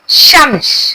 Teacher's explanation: शन शन की आवाज जुबान के बीच से निकलती है।